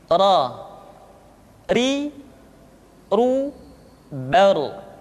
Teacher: huruf ra, diucapkan dengan menyentuhkan punggung lidah dengan langit-langit. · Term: huruf ro